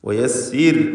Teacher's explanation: വയസ്സിർ ഇവിടെയും റാഇ സാക്കിനത്തും തൊട്ടു മുമ്പിൽ സ്ഥിരപ്പെട്ട കസ്റുമുണ്ട് എന്നതിനാൽ റാഇന് തർഖീഖ്. വയസ്സിർ എന്ന് നേർപ്പിക്കുക.